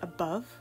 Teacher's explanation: an iamb due to the emphasis being on the second syllable